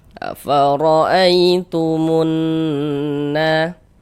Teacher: Maka berarti huruf ya sukun sebelumnya harokat fathah nih, maka dia adalah huruf lin. Kita baca lunak, lembut.